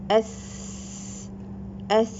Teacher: there is no vibration but you can feel a slight air in your hand